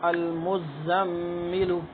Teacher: میم پر شد ہے تو اس پہ غنہ ہوگا